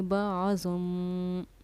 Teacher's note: یہاں اخلاف کا قاعدہ ہے، میم ساکن کے بعد با رہا ہے تو یہاں اس کے جوائنٹ پر با عظم پر ہم اخفا بھی کریں گے اور غنہ بھی کریں گے